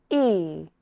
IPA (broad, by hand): iː